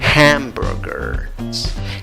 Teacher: Aunque la escritura lleva una S al final, la pronunciación es con una Z. Y la H al comienzo se pronuncia como una J.